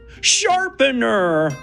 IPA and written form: ˈʃɑː.pən.ə (Sharpener)